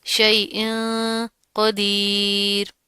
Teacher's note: تنوین آ رہی ہے، تنوین کے بعد کیا آ رہا ہے موٹے حروف میں سے؟ قاف. تو یہاں پر اخفا ہوگا، موٹا اخفا ہوگا